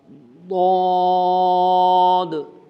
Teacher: میں دائیں طرف سے اپنی زبان کو اٹھا کر دائیں داڑھوں کے ساتھ اس کو لگا رہا ہوں